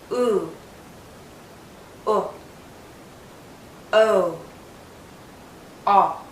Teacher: now some sounds require more of a circle than others but for all four my lips are generally rounded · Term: back vowels